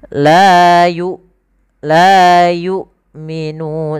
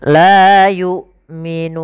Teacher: seakan-akan putus suaranya, tapi dia tertahan, bukan putus. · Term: huruf hamzah